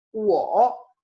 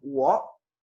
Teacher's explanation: Fíjense la diferencia entre un tercer tono completo, wo, a un semi tercer tono, wo.